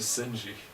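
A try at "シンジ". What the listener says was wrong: Shinji. Shinji. You got rid of the H.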